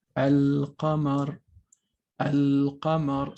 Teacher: So contrary to ash-shams letters that delete the lam, al-qamar letters will keep the sound obvious. Okay. So some examples of sun and moon letters are written here for your convenience.